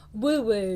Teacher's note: I like that word woo because we've got your lips rounded there.